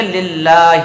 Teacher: تو یہاں پر للہ میں اللہ کے نام کو باریک رکھیں گے۔